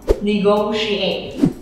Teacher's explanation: Cho nên lúc này mình sẽ có âm sh, mình phải cong lưỡi nha.